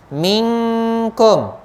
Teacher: Minkum, ming ni pun nun mati, nun sakinah jumpa dengan kaf, ikhfa hakiki, dengung 2 harakat lagi.